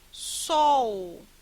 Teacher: em sol, nós encontramos esse O como vogal e este som de U como uma semivogal